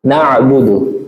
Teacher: Kemudian bainiyah, antara mengalir dan tertahannya suara. Dia tidak begitu mengalir suaranya dan dia juga tidak begitu tertahan suaranya, huruf ain.